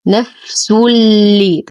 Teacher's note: يدخل التنوين دخولا كاملا في اللام فيسبب لي التشديد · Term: إدغام كامل بلا غنة